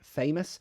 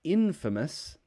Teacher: the a changes to a schwa sound